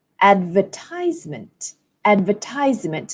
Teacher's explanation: in American English stress falls on the third syllable